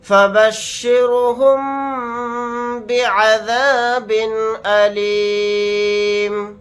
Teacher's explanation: یہاں پر میم ساکن کے بعد با آ رہا ہے تو یہاں پر ہم غنہ کر کے پڑھیں گے. غنہ اس طرح سے کریں گے فبشرهم بعذاب علیم.